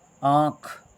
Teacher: इसमें नाक और मुख से जो है वो ध्वनि बाहर निकलती है और अनुस्वार में केवल नाक से ध्वनि बाहर निकलती है।